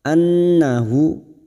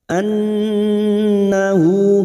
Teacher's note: nun yang bertasdid gunnah musaddada kita dengungkan selama 3 harakat